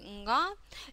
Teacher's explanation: звучит иногда как н да такой вот носовой нга э и может даже иногда казаться что это какое-то на